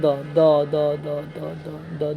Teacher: दंत हो जाएगा दांत में सटेगा